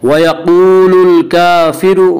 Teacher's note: व यक़ूलुल काफ़िरु वाव मद्दा, वाव मद्दा वो वाव जो साकिन है उससे पहले पेशो वाव मद्दा को एक अलिफ के बराबर खींच कर पढ़ेंगे।